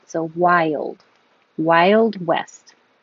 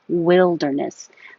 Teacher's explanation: But wilderness is a different vowel, wi, so your tongue doesn't have to go as high.